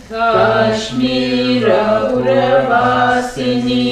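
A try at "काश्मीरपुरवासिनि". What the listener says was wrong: Yeah, there is no tea break between Kashmira and Puravasini.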